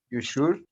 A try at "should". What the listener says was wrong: The L is silent. Don't say should. Should.